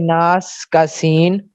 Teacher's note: اس کے ادا ہوتے وقت آواز مخرج میں ایسے ضعف سے ٹھہرتی ہے کہ سانس جاری رہتا ہے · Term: حمز